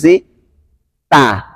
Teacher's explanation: Contoh kesalahannya yang sering saya temukan itu ketika mengucapkan huruf ta atau huruf lam menyentuhkan ujung lidah pada ujung gigi seri